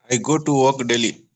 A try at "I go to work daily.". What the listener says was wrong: Great.